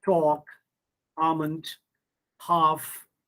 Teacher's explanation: l sound is silent in talk almond half